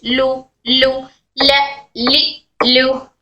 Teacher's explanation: लाम तब निकलता है जब जुबान का सामने का हिस्सा ऊपर के सामने के दांतों के मसोरों को सनाया से जवाही तक टच होता है।